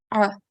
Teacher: the correct way to pronounce it is to pronounce it from the middle of the throat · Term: Ein